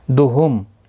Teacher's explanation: میم ساکن کے بعد دوسرا میم مشدد آیا ہے، ادغام شفوی ہوگا، گناہ کے ساتھ پڑھیں گے، ادغام شفوی ہوگا۔